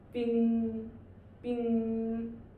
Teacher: The first tone is flat and high pitch